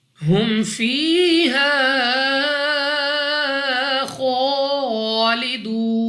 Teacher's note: واو ساکن سے پہلے پیش واو مدہ، مگر وقف میں جب نون کو ساکن کریں گے تو واو مدہ کی بجائے مد عارض ہوگی جس کی وجہ سے یہاں پر 3 4 یا 5 سیکنڈ تک کھینچ کر پڑھنا ہوگا.